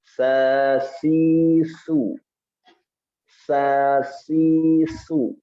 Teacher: Di antara sifat yang menonjol ketika mengucapkan huruf sin adalah sifat hams.